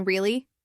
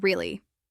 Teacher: The first one, rising tone, shows surprise or interest. The second one, flat or falling tone, might sound sarcastic or bored. You're using the same word but with a different feeling.